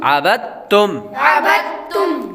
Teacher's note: پہلا جو متحرک حرف ہے اس کو ڈائریکٹ ہی آگے مشدد کے ساتھ ملا کر پڑھیں گے